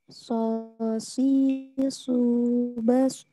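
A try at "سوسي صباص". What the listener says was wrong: Belum, ya ini masih ke huruf sin. Kemudian ya latihan lagi naikin. Sebenarnya masalahnya dinaikin pangkal lidah sih, gitu ya. Biasanya gitu. Kalau makrojnya udah benar.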